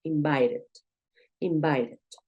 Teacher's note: es usual cuando tú ves una T en medio de dos vocales que esta puede sonar como una R.